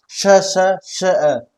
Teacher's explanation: मुंह के अंदर एक रगड़ रगड़ लग रही है, ठीक है, ये रगड़ के साथ हवा को ज्यादा स्पीड से बाहर निकाल रहा है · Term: संघर्षी व्यंजन